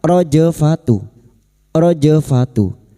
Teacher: Humur rojfatu. Jim sukun yang mati asli di tengah kalimat qalqalah sugro. Jangan lupa dipantulkan.